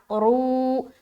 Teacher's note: रू वा मद्दा और रा भी मोटा